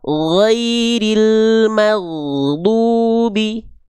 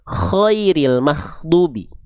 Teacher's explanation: Ghain mengalir nafas ghain mengalir suara tanpa adanya nafas mengalir. Huruf kha mengalir suara disertai dengan nafas yang mengalir. · Kalau huruf ghain ngalir suara tanpa nafas.